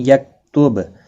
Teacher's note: با ساکن پر قلقلہ ہوگا ، وقف کی صورت میں بھی اور ملانے کی صورت میں